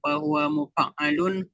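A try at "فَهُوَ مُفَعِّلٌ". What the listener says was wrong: Mufa'i. Fahuwa mufa'i. Harus kasrah. Fa'il. Fa'il.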